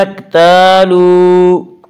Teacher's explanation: وا مدہ وہ جو ساکن ہو اس سے پہلے پیش ہو، وا مدہ کو 1 الف کے برابر کھینچ کر پڑھیں گے۔